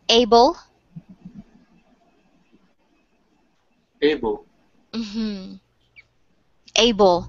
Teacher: Because you will notice, for example, if we write able, we have a vowel at the end after the L that we do not say, but you hear the schwa between the B and the L